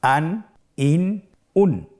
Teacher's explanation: প্রত্যেকটি উচ্চারণের শেষে দন্তন উচ্চারিত হচ্ছে